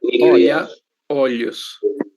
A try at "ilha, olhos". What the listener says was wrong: perfeito. Muito bem, exatamente.